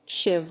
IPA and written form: ɕɪʋɐ (शिव)